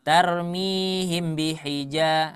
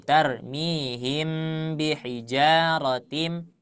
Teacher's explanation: ketika ghunah itu ditahan dulu jadi jangan terburu-buru